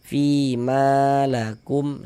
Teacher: Mad thobi'i dipanjangkan dengan panjang dua harakat.